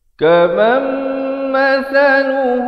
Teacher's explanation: asalnya kaman, tapi bila datang mim jadi idgham bi gunnah, masuk beserta dengung